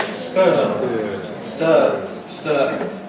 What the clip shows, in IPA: stɜː